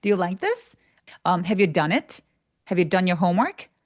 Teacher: 근데 어쨌든 미국 영어는 끝을 올린다.